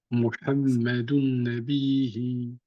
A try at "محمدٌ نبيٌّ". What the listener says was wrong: Pas Nabihi, Nabiyi. C'est un ya.